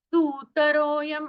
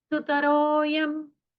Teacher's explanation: सुतरोयं ऐसा उच्चारण नहीं करना करना है सुतरो यम ऐसा ह्रस्व उच्चारण हमें करना है।